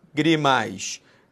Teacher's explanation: A sílaba tônica não é a última, não é a penúltima, é a antepenúltima. É a famosa proparoxítona.